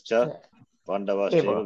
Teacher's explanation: Where Pandavaha plus Cha, Pandavas Chaiva, Visarga replaced by Sakara, Sakara by Shakara. Stutva Sandhi.